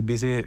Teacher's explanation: Spanish speakers tend to pronounce V as B because that's how it works in Spanish.